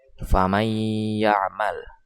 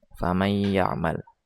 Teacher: Sedangkan secara istilah, idgham adalah memasukkan nun mati atau tanwin ke huruf mim, nun, waw, dan ya, atau biasa disingkat dengan yanmu. Cara membacanya yaitu dengan dengung selama 2 harokat atau 1 alif. · Di antara huruf nun dan juga ya ada pemasukan di sana. Faman ya'mal dimasukkan. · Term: idgham bigunnah